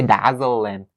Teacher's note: in North American English, the H sound is one of the very weak sounds